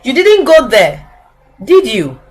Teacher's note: we also use the falling intonation at the end of a question tag that you are sure of the answer